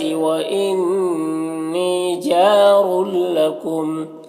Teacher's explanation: را کے اوپر دو پیش کی تنوین ہے تو را کو پر پڑھیں گے اور اس تنوین کے بعد لام حروف یرملون میں سے تو ادغام تام ہوگا، بغیر غنہ کے پڑھیں گے